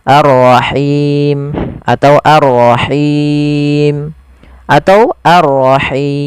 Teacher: Panjangnya boleh 2, 4 atau 6 harokat. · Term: mad arid lis sukun